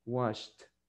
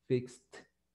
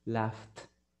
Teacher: Pero la otra manera es que usted se memorice que si el verbo en el presente termina con un sonido que no tiene vibración, por ejemplo, cuando usted dice wash, allí en ese último sonido, no al inicio, sino que en el último sonido, usted no tiene vibración. Entonces pronúncielo como una T,